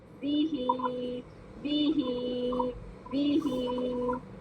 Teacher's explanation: तो बी को 1 काउंट और ही 2 काउंट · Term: मद